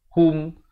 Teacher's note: Ha, baris dhammah bunyi hu. Bukan bunyi ho. Ialah bertemu mim jadi hum.